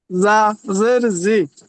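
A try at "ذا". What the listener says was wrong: জাল না, ঝা, ঝা।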